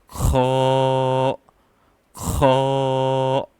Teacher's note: kho also comes from your throat, so upper part of your throat, and it's simply not kho, no, it's kho, kho, kho.